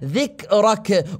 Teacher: حرف الكاف نحبس الصوت وبعدها نجري النفس